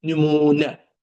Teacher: Nümunə vurğu sonuncu hecadadır.